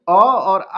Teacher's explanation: अ और आ का उच्चारण होता है कंठ से